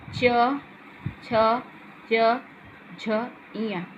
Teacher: तालु में च छ ज झ इया, आपकी जीभ जो है वो तालु से टच करती है